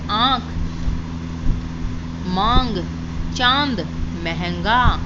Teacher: इसके उच्चारण में हवा नाक और मुंह से निकलती है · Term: अनुनासिक